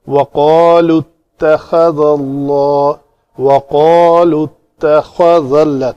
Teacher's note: تا کو پتلا کر کے خا کو پر کرنا ہے